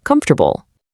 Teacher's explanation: So, we squeeze it all down into a super smooth three syllable glide. · Comfortable gives us 4 clunky, totally separated parts, basically because that's exactly how it looks on paper. But spoken English absolutely loves efficiency, so we squeeze it all down into a super smooth 3-syllable glide